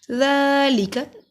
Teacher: ذال کے اوپر کھڑی زبر ایک الف کے برابر لمبا ہوگا